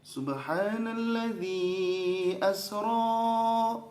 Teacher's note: itu ro-nya harusnya 2 harokat